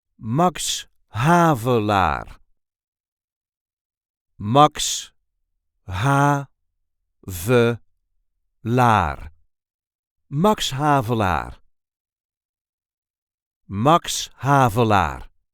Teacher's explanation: There is a light emphasis on the first syllable of the second word.